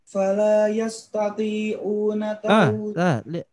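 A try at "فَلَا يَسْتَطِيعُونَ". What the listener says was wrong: yastati'u ain. Ya paksain. Jadi kayak a tadi. Yastati'u fala yastati'u.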